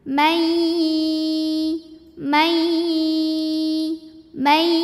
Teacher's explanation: Nun mati saat bertemu dengan ya maka bunyinya bukan man, melainkan mai. Jadi kita fokus langsung ke huruf ya sambil kita tahan dengungkan.